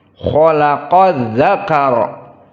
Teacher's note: Di sini alif lam sama sekali tidak dibaca dan tidak tersentuh dengan lisan, untouchable.